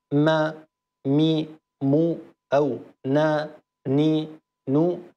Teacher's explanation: لو كانت الميم أو النون متحركة، ما مي مو أو نا ني نو، هذه ستة أصوات، فأيضا الغنة موجودة ولكنها أنقص ما تكون